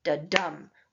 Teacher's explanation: Each pair is called an am and consists of an unstressed syllable followed by a stressed syllable. This creates a rhythm that's a bit like a heartbeat because if you feel your heartbeat, you will notice that you have a soft beat followed by a hard beat.